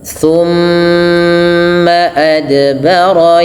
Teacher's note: qalqalah, pantulkan pada lafal dal kita karena ada huruf qalqalah. Yas'a, thumma adbara yas'a, panjangkan a 2 harakat.